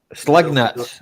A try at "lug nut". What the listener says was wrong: Drop the S. Just L-U-G. Lug nut.